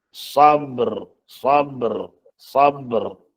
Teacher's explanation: Walaupun tidak berbaris, tapi kita sebut sifatnya, iaitu getar. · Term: sifat takrir